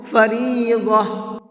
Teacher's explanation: جب گول تا پر وقف کرتے ہیں تو وہ گول تا ہا بن جاتی ہے